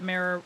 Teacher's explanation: You tend to say it mirror with a slight hold on the R. It works poorly.